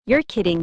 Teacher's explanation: Let your voice rise at the end. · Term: intonation